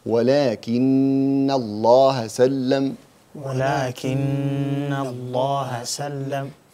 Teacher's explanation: The first one, which is the most complete ghunna, is in the stressed and merged noon and meme.